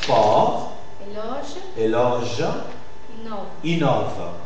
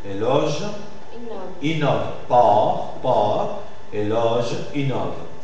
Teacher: Il y a une variante combinatoire où le O c'est plus allongé en syllabes toniques et suivi de consonnes R, J, V. Dans ce cas, c'est comme si vous prenez un peu plus de temps pour bien marquer l'articulation de ces consonnes. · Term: O ouvert